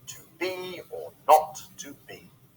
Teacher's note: This 2-syllable foot is like a reverse trochee, so the first syllable is unstressed and the second is stressed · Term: iamb